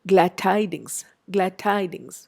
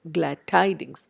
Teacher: The d becomes very close to the t of the next sound. So this is an example of assimilation.